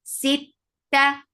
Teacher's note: Sit, for kasra give E sound, attach it ta. Ta will get sifa of shidda. It means no flow of sound at all.